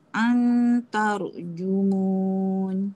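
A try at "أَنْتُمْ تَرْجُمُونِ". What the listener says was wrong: Okey, bagus kak.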